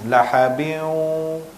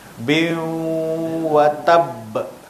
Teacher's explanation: tanwin bertemu dengan waw dan kena berserta dengan dengung. Ada dengung. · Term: idgham ma'al gunnah